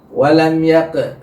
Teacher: Kayak tadi dibaca ini, itu qalqalahnya betul keluar, ya, tapi pantulan yang keluar bukan suara huruf qaf, tapi agak sedikit huruf, ya, seperti ini, walam yaq.